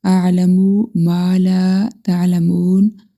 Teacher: ما کے ساتھ الف مدہ، لا کے ساتھ الف مدہ، آگے واو مدہ، تینوں کو ہم 1 سیکنڈ تک لمبا کریں گے